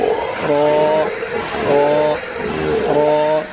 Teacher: জিহ্বার আগার পিঠ, মানে জিহ্বার মাথা যে আছে সেই মাথার পিঠ তার বরাবর উপরের তালুর সঙ্গে লাগাইয়া উচ্চারণ হবে র, র, র